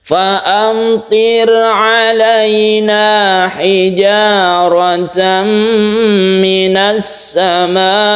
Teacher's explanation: Idgham artinya masuk, karena idgham maka ini timbul tasydid sin, tidak dibaca alnya. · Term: idgham syamsiyah